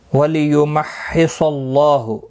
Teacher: صاد حروف مستعلیہ ہے، پر پڑھا جائے گا. اللہ کا لام زبر کی وجہ سے پر پڑھا جائے گا · یہاں تشدید والا حرف ہے، تھوڑا سختی کے ساتھ پڑھیں تاکہ تشدید ظاہر ہو. صاد حروف مستعلیہ ہے، پر پڑھا جائے گا